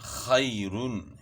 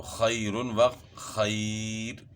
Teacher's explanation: یا ساکن سے پہلے زبر یائلین ہے، اس کو بھی نرمی کے ساتھ پڑھنا ہے